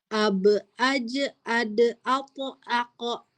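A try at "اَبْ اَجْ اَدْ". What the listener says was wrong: Nah, nah itu qalqalah.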